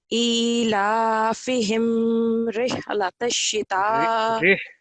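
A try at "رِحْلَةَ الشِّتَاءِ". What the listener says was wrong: رہ یہ نیچے نا کسرہ ہے. رہ.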